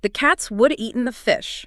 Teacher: It still takes the exact same amount of time. Would have and the second half of eaten all just got crammed into the tiny fraction of a second right before the next drum beat. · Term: stress-timed